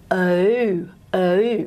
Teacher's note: And then we also have a rounded version, which I have in Australian English as oo, oo, hoo. I do diphthongize it a little bit. I have a schwa-like on glide.